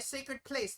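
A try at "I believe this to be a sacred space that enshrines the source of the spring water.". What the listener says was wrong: Sacred space. You said place, not space.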